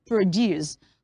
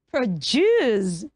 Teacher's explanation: Mind you, the first syllable have the schwa sound, which makes it p in instead of pro, okay?